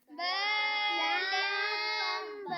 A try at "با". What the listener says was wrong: با کو لمبا نہیں کرنا تھا. با کو ایک الف.